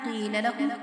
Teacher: قاف کو جو ہے موٹا پڑھیں گے